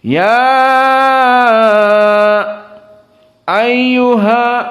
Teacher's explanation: namun qiraah Hamzah di sini setelah panjang dia saket